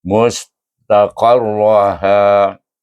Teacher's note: Ta alif ta, qaf alif ra, qar ra alif ra dengan tebal, ha alif. Mustaqarraha dengan mat asli 2 harakat pada ha.